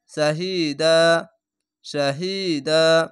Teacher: শাহিদান, শাহিদান, এই দান না বলে এখানে তো আছে, থামতে হবে, তার জন্য শাহিদা, শাহিদা, এভাবে এক আলিফ টেনে পড়বেন। দুই জাবার যদি থাকে তাহলে একটি জাবার বাদ দিয়ে এক আলিফ টেনে পড়বেন, যদি থামতে হয় তাহলে।